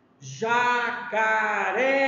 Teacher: A sílaba forte é Ré. Ré. Ré do jacaré. É a última sílaba.